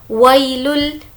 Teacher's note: यहाँ पर खींचना नहीं है क्योंकि ये यालीन है। यालीन की मतलब ये होता है कि या जिस पर जज़म हो और उससे पहले ज़बर हो तो वह यालीन होगा और इसको खींचकर नहीं पढ़ेंगे।